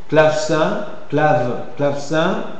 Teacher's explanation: une variante combinatoire sourde, c'est par assimilation progressive en consonne sourde suivante, quand le mot qui suit est sourd. Hein, pas le mot, enfin, la syllabe qui suit est sourde.